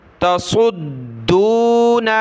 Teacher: सौद को मोटा किया और इसको दाल के साथ मिलाकर, दाल को हमने सख्ती के साथ पढ़ना है, दाल को फिर आगे वाव के साथ मिलाएंगे।